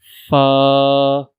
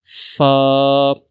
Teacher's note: Fa is pronounced from the edge of the upper front teeth and the wet part of the lower lip. So try to read, pronounce it from the edge of the upper front teeth and the wet part or you can say the inner part of the lower lip, wet part of the lower lip and the upper front teeth. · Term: lips letters